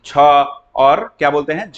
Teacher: हमेशा आपको ह का जो हकार की ध्वनि सुनाई देगी और ज्यादा आपको क्या निकलेगा, मुख से हवा निकलेगा, तो उसको क्या कहेंगे हम लोग, महाप्राण, ठीक है ना।